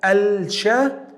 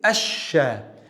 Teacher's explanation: We delete the lam and pronounce the word with two sheens, like double letters or shadda. Instead of al-sha, we say ash-sha. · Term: lam shamsiyya